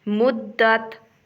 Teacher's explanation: مدت، دال کے اوپر شد ہے اور تا کے اوپر جزم ہے، دال کو سختی سے ادا کرتے ہوئے تا کے ساتھ ملائیں گے